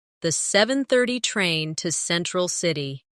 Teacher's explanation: Do you notice how to almost disappears? It blends into the next word, sounding like to Central City.